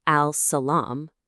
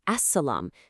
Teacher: See how the L just vanishes, and we put the stress on the S. · You pretend it's not even there. Instead, your tongue goes straight to the next letter, and you give that letter a little extra stress, what's called a shaddah in Arabic.